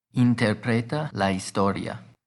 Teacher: remember the ia is treated as one syllable so the stress comes on the o